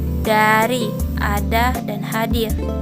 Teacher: bunyi yang dihasilkan oleh alveolum yang berarti gusi dan afek yang berarti ujung lidah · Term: Apikal alveolet